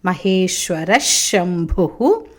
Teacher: శ ఉన్నది అందుకని దాని ముందు వచ్చిన విసర్గ సకార శకారం అవుతుంది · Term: విసర్గ షకారం